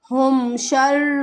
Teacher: اظہار کے معنی ہے ظاہر کرنا، یعنی کہ ہمیں ہم کی آواز کو جلدی سے ادا کرنا ہے، ایسے غنہ نہیں کر دینا